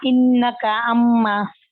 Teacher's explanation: آواز کو ایک الف کی مقدار کے برابر ناک میں جاری رکھ کر یعنی گنہ کرتے ہوئے ادائیگی کی جاتی ہے